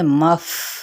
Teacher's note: فا پہ ہمز کریں گے، مف، یہ والی ساؤنڈ ہوتی ہے